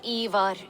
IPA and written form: ˈeɪvɔːr (Eivor)